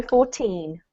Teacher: emphasize the second syllable to differentiate from 40, which is emphasize the first